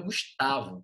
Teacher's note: A sílaba tônica do meu nome está no tá